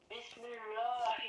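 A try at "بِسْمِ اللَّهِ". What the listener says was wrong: Si je te dis aminci, quand c'est aminci, tu ne dis pas Allah. On dit Allah, on fait l'emphatique quand la voyelle précédente c'est une dhamma ou une. Par exemple ici ça donne inni abidullahi wa qala Allahu, tu vois, Allahu. Mais ici ça donne fillahi, c'est aminci.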